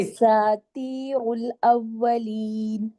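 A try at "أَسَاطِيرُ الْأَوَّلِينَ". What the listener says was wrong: ابھی تو دیکھو ملا کے پڑھنے میں کیسے پڑھیں گے؟ وہ تو را کے اوپر میں رکنے میں، آپ جب رکی ہو نا تو آپ نے اس کو موٹا کیا ہے. ملا کے پڑھنے میں یہ تو چیزیں آپ کو آنی چاہیے نا، یہ تو بیسک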